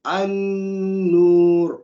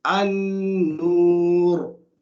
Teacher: now the shadda with the noon, so you hold it.